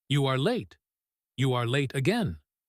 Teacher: He is stressing late and again to show his frustration.